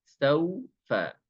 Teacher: inti dari bacaan lin adalah ketika itu ada waw sukun, maka pengucapannya ke makhrajnya waw sehingga berbunyi u